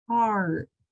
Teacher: For instance, between the P and the R, I was thinking ahead and I knew that when my mouth opened from the P sound, it was going to have to go straight to an R. So I made that shape as quick as I could.